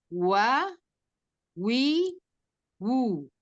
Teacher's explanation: ketika mengucapkan waw walaupun dia kasroh, fathah maupun dhammah semuanya monyong.